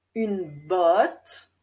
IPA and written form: yn bɔt (une botte)